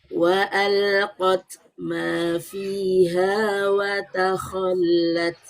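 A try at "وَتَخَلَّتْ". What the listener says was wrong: Oke, infitahkan lagi ho agar lebih lapang. Wa takho.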